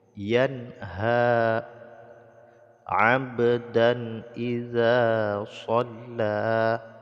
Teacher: dipantulkan suara ba-nya karena qalqalah sughra. Tanwin bertemu dengan hamzah diizharkan, tidak boleh dengung.